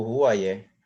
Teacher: com a fricativa glotal, nós observamos, em contexto inicial, a pré-vocalização, né? Nós exemplificamos aí, por exemplo, a palavra para malária, febre, ruaié, que o falante realiza o ruaié, né?